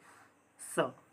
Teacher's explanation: तीसरा है स जो कि दंत से उच्चारित होता है